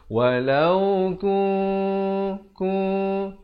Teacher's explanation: Ikhfa maksudnya disamarkan. Nak kata nun pun tidak. Ta pun tidak. Di tengah-tengahnya itu dengan kadar 2 harakat. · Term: ikhfa hakiki